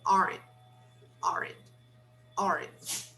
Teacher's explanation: We don't clearly pronounce the T at the end of negative contractions. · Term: the final T